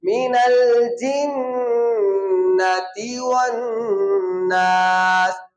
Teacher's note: آپ کو پھر سمجھ آ جانی چاہیے کہ نون مشدد پر غنہ ہوتا ہے